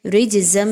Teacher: جیم حروف قلقلہ میں سے ہے اس لیے اس کو ہلا کر پڑھا جائے گا